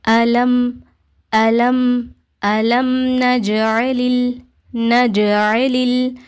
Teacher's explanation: சுக்குூன் பெற்ற மீம நம்ம நல்லா வெளிப்படுத்தி ஓதும் கிளியரா ஓதணும் குண்ணா செய்யக்கூடாது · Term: ஷபவி